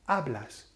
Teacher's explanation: So that's S, that's the nose rule, so it falls on the second last A, which happens to be the first A in the word.